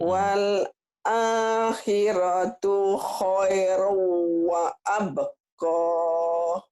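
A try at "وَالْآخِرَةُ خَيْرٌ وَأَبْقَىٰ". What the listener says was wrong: Nah, jangan wa abqoh, seakan-akan ada kaknya, ya.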